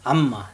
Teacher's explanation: এখন আমরা শিখব মিমের গুণা, অর্থাৎ মিমের উপরে তাজদি থাকলে কিভাবে গুণা করতে হয়। মিমের গুণা করার সময় মুখ বন্ধ রেখে গুণা করতে হবে।